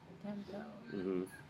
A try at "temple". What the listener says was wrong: It's like a UL sound. Temple. Temple. It's more like a P. Yeah, but it's a very short P, so it's not. I see what you're saying, that it sounds like a B because it's so short, but it's P.